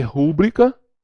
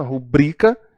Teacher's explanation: rúbrica seria proparoxítona, ela é paroxítona, rubrica